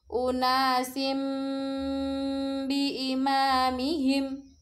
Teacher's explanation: Disebut bacaan iklab. Bunyi nun sukun atau tanwin diganti menjadi bunyi mim sukun.